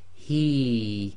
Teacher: the ya goes sakin, so effectively it becomes the long vowel kasra ya, so this becomes he, too long.